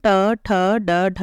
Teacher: इन वर्णों का उच्चारण मुर्धा स्थान से होता है